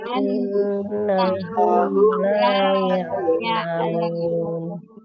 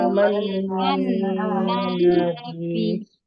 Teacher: Itu mim dan nun bertasdid ya. Itu harus ditahan 2 harokat, 3 ketukan